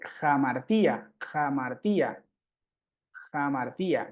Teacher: Y ese espíritu suena como una H en inglés o como una J, digamos, suave. Es decir, le agrega un poco una exhalación o un poco más de viento en la pronunciación. Entonces, se lee al principio, antes de la vocal. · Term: espíritu áspero